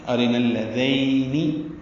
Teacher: ذین ذال نرمی سے پڑھیں گے، اور یہ یائے لین ہے، یائے مدہ نہیں ہے، اس لیے ذین نرمی سے پڑھا جائے گا اور ہونٹ پیچھے کی جانب لے جائیں گے.